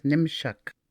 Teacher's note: the double O vowel sound is weakened, and it could be said as Nimshuk. Nimosh, dog, becomes Nimshuk, dogs.